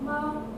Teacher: Again, varies from speaker to speaker, varies depending on emotional state and context. So tone 1 is a high level tone, 5-5.